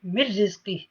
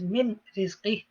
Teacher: The noon goes into the ra, which is Idgham, and no ghunna applies because these are the exceptions, ra and lam. Ghunna does not apply with the ra and lam.